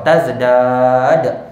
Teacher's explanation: bila mana kita waqaf dan itu kita matikan dia dan ada qalqalah besar lah, qalqalah kubra